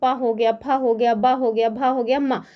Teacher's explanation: इनको जब आप बोलेंगे ना तो आपके होठ जो है ना वो आपस में एक दूसरे से टकराएंगे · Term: प वर्ग